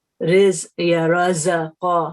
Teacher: زائی میں جو ہے سم ٹائمز بزنگ ساؤنڈ ہوتی ہے، تیز آواز